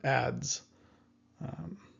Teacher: Next, we have the Z sound. So this is not just like the English Z, but it has a D at the beginning, Z, as in the word ads, which probably is just the same as advertisements, ads.